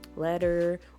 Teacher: I have like a soft T sound that almost sounds like a D.